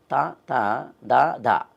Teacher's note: త ద అన్నప్పుడు నాలుకని దంతాన్ని తగులుతాం కాబట్టి దంత్యాలు అన్నారు